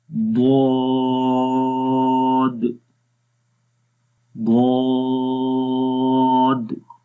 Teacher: تو اس کو ہم نے پڑھنا ہے ضاد، منہ کو کھول کر پڑھیں گے، آواز کے اندر موٹائی آئے گی، آہستہ سے زبان کا جو بغلی کنارہ ہے، سائڈز ہیں، وہ اوپر والی داڑھوں کی جڑوں کے اوپر لگے گا اور اس کے اندر درازی آتی ہے۔